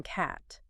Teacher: a nonrootic vowel like the A in cat, >> your tongue can stay pretty flat, relaxed,